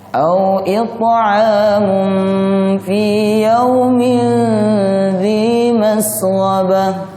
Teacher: ta ini termasuk huruf yang memantul saat sukun. Nah, cara pantulannya ke huruf ta, jangan ke huruf te atau t.